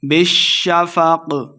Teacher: بالشفق شین مشدد ہے، با کو شین کے ساتھ ملائیں گے